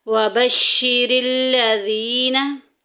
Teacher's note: या सकिन पीछे ज़ेर आ गई, या मद्दा का कायदा जारी हो रहा है, एक अलिफ के बराबर लंबा करेंगे